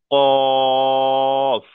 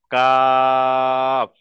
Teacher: এই যে কপের আওয়াজটা হবে, মুখটা গোল করে হবে, পুর শব্দ,